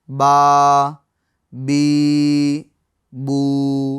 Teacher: اور با خشک یعنی سوکھے حصے سے ادا ہوتی ہے